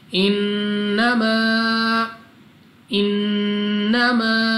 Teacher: अलिफ से पहले ज़बर अलिफ मद्दा, 2 सेकंड तक खींचकर पढ़ना है · आपने नाक में ले जाकर पढ़ना है और गुन्ना को 2 सेकंड तक खींचकर पढ़ना होता है